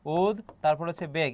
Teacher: এই যে উদ্বেগ, এখানে ব ফলার উচ্চারণ বহাল আছে, গতবারও এটা এসেছে, উদ তারপর হচ্ছে বেগ, এখানে ব ফলার উচ্চারণ বহাল আছে।